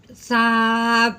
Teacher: سا کو ہم نے نرمی سے پڑھنا ہے، سیٹی کی آواز بالکل نہیں نکلے گی